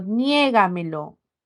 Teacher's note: La sílaba tónica es nie.